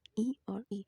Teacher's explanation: इन्हें तालु से उच्चारण किया जाता है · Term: तालव्य